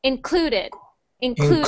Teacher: we stress the syllable clue. So we say clue the loudest. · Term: stress on the syllable